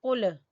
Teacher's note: قل زبان کی جڑ سے ادا ہوگا، قل، اور لام کو قاف کے ساتھ ہی پڑھنا ہے۔